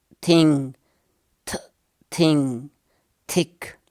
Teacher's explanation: tip of the tongue is resting against the upper teeth